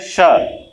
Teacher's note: ये जो तालव्य श होता है, इसका भी उच्चारण स्थान क्या होता है? तालु होता है।